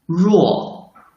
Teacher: The sound is produced by rolling up the tip of tongue toward the front end of hard palate. Then let the tongue tip touch the hard palate lightly. Finally, let the air squeeze out between the tongue tip and the hard palate.